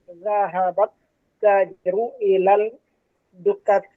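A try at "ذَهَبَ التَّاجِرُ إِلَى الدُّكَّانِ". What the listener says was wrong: Zahabat tajiru, betul, ini sampai sini betul. Terus ilad, bukan ilal, ilad, masuk ke dal. Ilad dukani, ya, ilad dukani, betul, di kasroh akhirnya ya, karena ila itu huruf jar, ya. Zahabat tajiru ilad dukani. Yang salah tadi yang pertama ilal dukani. Ini huruf apa ini? Syamsiyah ya.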